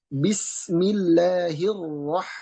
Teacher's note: dalam pengucapan huruf ro dia getar dan ada samarnya